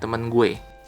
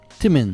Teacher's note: the word for friend, teman, is pronounced more like temen.